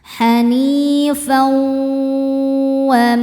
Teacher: tanwin ini kita masukkan ke waw ya. Kemudian tidak sekedar masuk, kita juga harus menahannya atau didengungkan. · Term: idgham bi gunnah